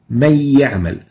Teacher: So من يعمل to من يعمل is idgham. And here we're converting the noon into ya and joining the two yas to produce a stressed ya. This is a hukum of أحكام التجويد, of the rules of tajweed, and it's called idgham.